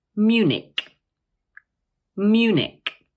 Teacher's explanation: the word has two syllables, Munich, and the stress is placed on the first one. Also notice that the CH at the end of the word is pronounced like a K.